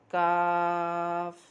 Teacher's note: اب اگلا حرف ہے کاف، یہ بھی وہیں سے ادا ہوتا ہے، صرف تھوڑا سا اگلا حصہ، یعنی کہ اگر قاف بالکل آخر میں سے ہے تو کاف اس سے تھوڑا سا اگلا حصہ ہے، اور اس میں فرق یہ ہے کہ یہ پر پڑھا جاتا ہے اور یہ باریک پڑھا جاتا ہے، ٹھیک ہے۔